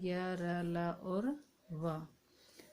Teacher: जिन वर्णों के उच्चारण में जीभ मुख के भागों का मामूली सा स्पर्श करती है, उन्हें ईषत् स्पर्श कहते हैं